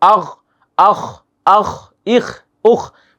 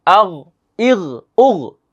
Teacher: গইন এবং খ, এগুলো হচ্ছে কণ্ঠনালীর শেষ ভাগ থেকে উচ্চারিত হয়।